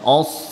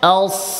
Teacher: হামজা কিন্তু পাতলা হবে, অস না, আস।